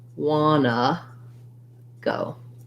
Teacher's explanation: the t's in want to are going to drop out entirely and the u sound of the o is going to change to a schwa more like an uh so it's going to sound like wanna